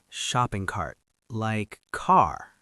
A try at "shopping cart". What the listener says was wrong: Almost. Cart, not car. Shopping cart.